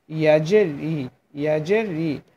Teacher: জিহ্বার মাঝখান তার বরাবর ওপরে তালুর সঙ্গে লাগিয়ে ইয়া উচ্চারণ করতে হয়